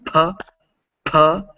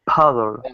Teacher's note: Now if you say a P sound, when you say it, you'll probably feel that same puff of air. But when English speakers say it, we give a big puff of air with it. So try going puh, puh, and making sure that a lot of air hits your hand when you do that.